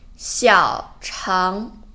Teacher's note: 小 third tone 肠 second tone